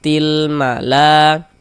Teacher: kemudian la dibaca panjang ini namanya adalah mad wajib muttasil